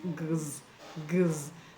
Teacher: the X in examine is pronounced gz, gz, because there is a vowel letter after the X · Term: g sound